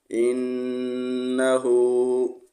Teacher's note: ہا الٹا پیش کو ایک الف کے برابر کھینچ کر پڑھیں گے